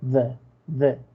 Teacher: no pronuncian tanto la E como en español, sino es como una mezcla entre A y E